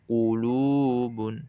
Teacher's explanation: Pada kata qulubun, wawu sukun sebelumnya dhammah pada huruf lam. Maka lamnya itu dibaca 2 harokat. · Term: mad tabi'i